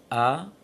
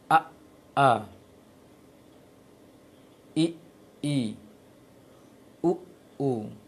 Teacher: Coba ucapkan hamzah tanpa ada rasa tertahan di tenggorokan bawah, di makhrajnya. Pasti itu mengawali hamzah a, pasti ada terasa tahan, apalagi ketika tasydid. A tidak mungkin sekonyong-konyong ataupun selepas seperti itu saja langsung bunyi A.